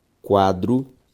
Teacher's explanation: a sílaba tônica de quadro é qua